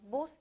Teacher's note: reducción de las palabras pueden ser por aféresis que es cuando hay supresión o pérdida de los primeros fonemas de una palabra